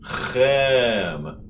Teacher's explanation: now you wanna put that ch together with an open E vowel, which is e.